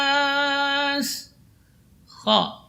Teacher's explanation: huruf H ini keluar dari ujung tenggorokan